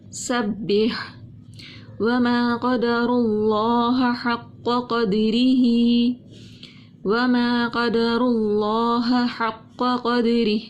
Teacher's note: ہاں کو موٹا حلق سے نکالا ہم نے. اللہ کے نام سے پہلے پیش تھی، اس لیے اللہ کے نام کو ہم نے موٹا پڑھا.